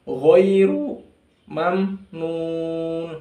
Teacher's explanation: Ajrun ketemu huruf ghain ya, ajrun ghairu bukan ghairi, kadang orang baca ghairil maghdubi, ghairi salah, tapi ghain, huruf ghain dia tafkhim ya, tebal